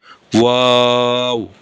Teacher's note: দুই ঠোঁট গোল করিয়া মুখ খোলা রাখিয়া। মানে দুই ঠোঁট গোল করে মাঝখানে একটু মুখ হালকা একটু খোলা রেখে উচ্চারণ হয়